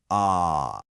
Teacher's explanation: The mandarin sound comes from further back. It's more open. It's more pure.